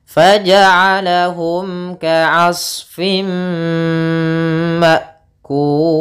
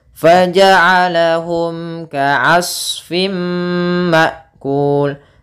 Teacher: mim mati harus jelas ketemu kaf